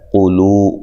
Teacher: قاف کو موٹا لام کو باریک